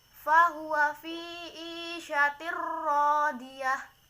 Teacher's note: Isyatir ro, ini ada hukum bacaan idgham bila gunnah karena ada kasroh tain bertemu dengan huruf idgham bila gunnah yaitu ro. Cara membacanya masuk ke huruf berikutnya.